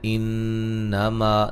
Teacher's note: انما نون مشدد پہ غنہ ضروری ہے